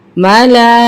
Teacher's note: खड़ा ज़बर भी है, मद भी है, तो ये ज़्यादा खींचेगा